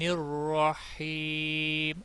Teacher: وسط حلق والا ہا ہے، یہاں پر دو چشمی ہا نہ نکل جائے، وہ غلط ہو جائے گا